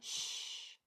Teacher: So I have an SH here, that's sustained quiet sound.